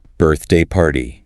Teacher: Stress on birth. Compound noun pattern.